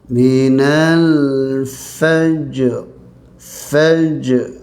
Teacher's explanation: Lam ni lam qamariyah, keluarkan dia. Fa baris atas ni dia nipis, jim dia akan lantun. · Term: jim lantunan